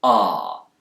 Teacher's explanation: British speakers, especially those in the south of England, will use a more back vowel sound here, ah, but Americans will tend to use a more front vowel sound. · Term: Bath vowel